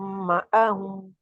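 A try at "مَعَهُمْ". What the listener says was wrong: माअहुम, आइन को माअहुम नहीं कहना, हमजा की तरफ नहीं जाना, आइन है, ठीक है।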